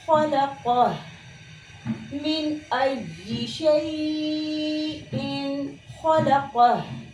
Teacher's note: हा की अदायगी में एक एयर है जो मुंह से बाहर की तरफ निकल रही है, आवाज़ जारी है और आवाज़ में एक किस्म की पस्ती पाई जा रही है, यानी एक कमज़ोरी पाई जा रही है। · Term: हम्ज़